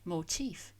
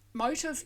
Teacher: It has a distinct F sound at the end, not like motive with a voiced sound. And the stress on the second syllable, whereas motive, the reason for doing something, the cause for the crime, of course, stresses the first syllable.